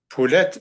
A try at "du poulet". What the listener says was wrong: On dit pas du poulet, papa, du poulet. Le thé, papa, il est muet. Il sert à rien, donc il doit rester silencieux.